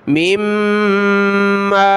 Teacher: میم کو میم کے ساتھ ملایا، مد کی وجہ سے کھینچیں گے